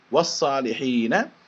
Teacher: huruf lamnya itu melebur atau dimasukkan ke dalam huruf shad atau huruf sesudahnya. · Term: idgham syamsiyah